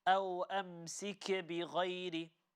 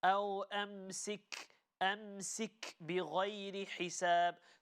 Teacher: the letter kaf does have a sakin on top, but the letter must not be recited with qalqala